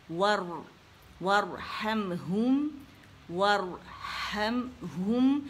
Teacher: اب را ساکن سے پہلے زبر آ گئی تو وہ یہ موٹی ہو گئی